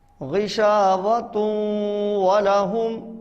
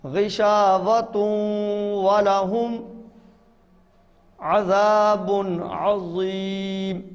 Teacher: تا کو واو سے ملانا ہے اور ناک میں آواز لے جانی ہے